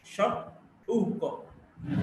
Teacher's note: U, back, close, rounded, short vowel.